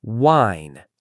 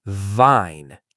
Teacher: Wine, round lips, vine, teeth on lip.